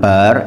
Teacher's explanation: karena di sana memang 90% masih tradisional ro diucapkan bar itu ro tafkhim rok tebal bukan rok tipis karena rok didahului harokat fathah itu dibaca tebal